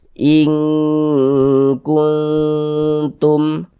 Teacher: Maka ini kita baca ing. Di bagian ingnya itu kita tahan, kita panjangkan sejenak. Nah, kita dengungkan sepanjang 2 harokat. Ing kuntum. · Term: ikhfa